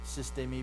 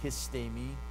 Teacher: the loss of the sigma at the beginning of the word. It became aspirated.